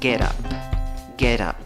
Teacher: la escritura va con una U, la pronunciación va con schwa, la que no es ni A, ni E, ni O. La T y la schwa las pegas.